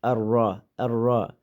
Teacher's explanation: Ar-Rahmandagi alif lam idgham shamsiya harfi bo'lganligi uchun lam o'qilmaydi. Ra zabarlik bo'lganligi uchun qalin alif o'qiymiz.